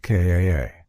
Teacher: The British accent tends to soften the R so car sounds more like Kaa